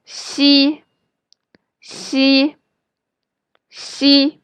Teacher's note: And xi is somewhere between s and sh in English. Make sure your lips are spread wide when you say xi, and the middle part of your tongue is pressed up against your hard palate.